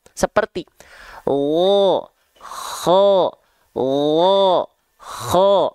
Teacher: huruf kho dilafalkan dengan lemah juga, mengalir suara, tapi dialirkan dengan nafas yang karakteristiknya seperti ngorok